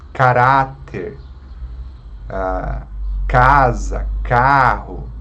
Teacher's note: que são as palavras com a penúltima sílaba forte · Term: paroxítona